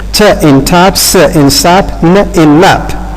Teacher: alveolar consonants are formed by the narrowing of the vocal tract at the alveolar ridge.